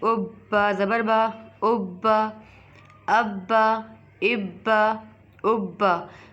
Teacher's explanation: با پر کریں گے جماؤ، دال پر کریں گے جماؤ، کیوں؟ کیونکہ یہ حرف قلقلہ میں سے ہے